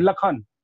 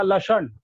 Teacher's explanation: पेट कटा श, जिसको मूर्धन्य श बोलते हैं, लेकिन उसका उच्चारण ख करते हैं, लखन। आप देखेंगे वहां लिखा रहेगा लक्षण, अब बोलते हैं उसको लखन।